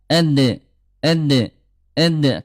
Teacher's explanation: huruf dal dia syiddah dia kuat dan qalqalah mantul